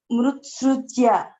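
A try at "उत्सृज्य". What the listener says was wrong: Not mru. Mutsrujya. Don't take it as mru. It is mutsrujya.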